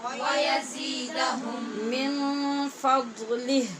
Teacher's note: میم کا میم میں ادغام ہو رہا ہے، اس کو ادغام شفوی کہتے ہیں۔ یہاں میم ہے یزیدہم کا میم اور اس کے بعد من کا میم، تو پہلے میم کا دوسرے میں ادغام ہو رہا ہے، اس لیے غنہ ہوگا۔